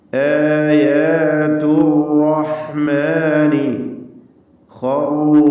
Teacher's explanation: ഖറു തഫ്ഖീം ചെയ്യേണ്ട ഇസ്തിഅലാന്റെ അക്ഷരമാണ്.